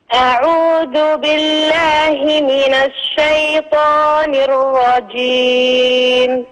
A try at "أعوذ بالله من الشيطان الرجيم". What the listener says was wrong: حققي كسرة الباء. أعوذ بالله